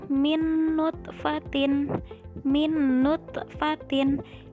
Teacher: Yang menjadi ciri idgham bi gunnahnya yaitu ada nun sukun bertemu dengan huruf nun, maka langsung dimasukkan ke huruf nun